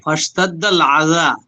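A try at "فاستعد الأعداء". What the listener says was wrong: ফাস্তাদ্দাল আজা, আলিফ লাম কোথায় পেলেন?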